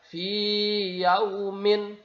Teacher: Jadi fi-nya ya di sini tetap dibaca karena ya di sini adalah huruf mad, maka dipanjangkan dulu baru masuk ke yaum, ya. Fi dipanjangkan 2 harokat.